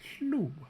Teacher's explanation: So hl is going to be plus spread glottis. And so it is going to throw off a high tone at the start, which we haven't seen much of yet. And then we're going to have a mid-tone at the end because it is a sonorant, and we're going to end up with something like hlu.